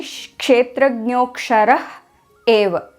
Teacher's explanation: And after the Visarga, there is another vowel, A. Since the Visarga is between two vowels, it becomes Lopa, meaning it disappears.